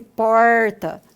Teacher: ser um R retroflexo, né, em que nós invertemos a língua, né, para falar esse porta